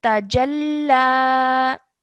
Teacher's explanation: when you're joining the jim to the lam, you have to do so with force because do you remember I told you that anything with a shadda on it needs to be joined onto the previous letter with force.